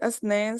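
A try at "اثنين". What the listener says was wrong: हाँ, ये इसनैन का थोड़ा सा मसला आ रहा है कि ई के साथ करना है, ठीक है, इसनैन, इसनैन, इसनैन।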